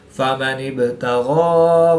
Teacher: با حروف قلقلہ میں سے ہے تو یہاں پر قلقلہ صغریٰ کر کے پڑھیں گے۔